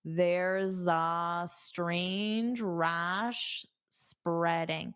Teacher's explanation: So you'll hear a voiced sound. There's za. So it sounds like za.